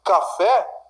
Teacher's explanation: Café, sílaba tônica é a última, está acentuada. Café, é uma palavra oxítona.